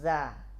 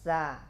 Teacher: Zai tertahan nafas, al-jahru. Sin mengalir nafas. Maka sifat jahr pada zai ini ketika berubah menjadi sin.